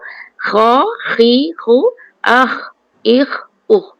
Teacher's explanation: pangkal lidah juga bertemu dengan langit-langit. Dia kena angkat. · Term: huruf kerongkong